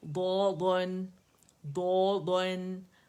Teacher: یہ موٹی آواز ہے اس کی، لیکن جو نون اس میں چھپا ہے وہ باریک ہے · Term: نون باریک ہے